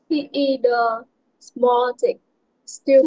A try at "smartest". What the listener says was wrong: Small hả? Phải small không? Phải small không? Smartest. Smartest. She hoặc là he is the smartest student in our class.